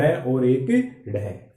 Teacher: उत्क्षिप्त यानी फेंका हुआ, फेंका हुआ या जिसका उच्चारण झटके से हो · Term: उत्क्षिप्त वर्ण